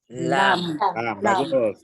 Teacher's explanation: dah enam huruf dah okey kemudian kita pergi hujung lidah apa hujung lidah dan juga tepi kawasan tepi lidah kanan dan kiri sentuh kawasan gusi depan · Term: huruf lam